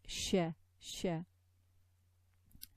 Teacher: this Sheen is associated with another attribute, which is like a spraying sound. So ash, like this, sh, sh.